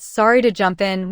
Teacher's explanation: with a rising tone, people didn't feel interrupted. They felt included.